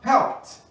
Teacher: Então não se fala helped. O E não se fala e o D passa a ter som de T.